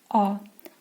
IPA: a: